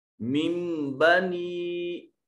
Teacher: اِلَى الْمَلَإِ मिम नून साकिन के बाद बा हर्फ इकलाब में से, तो यहाँ नून को छोटी मीम के साथ बदल कर पढ़ा जाएगा।